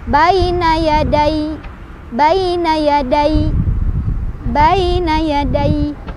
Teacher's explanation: ketika berhenti ya-nya kan harus jadi sukun, tapi tasydidnya tetap ada